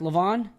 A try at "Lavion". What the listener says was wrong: It's Levon, the I is silent, so